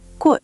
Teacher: 꽃 means flower, that tense g at the beginning.